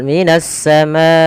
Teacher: sini ada alif lam kita namakan dengan alif lam syamsiah yaitu alif lam yang dia tertulis tapi tidak dibaca lamnya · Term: alif lam syamsiyah